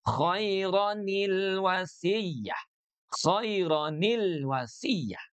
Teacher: Cara menyambungkan keduanya itu mempertahankan bunyi tanwinnya dan juga mempertahankan hamzah wasalnya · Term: nun wikoyah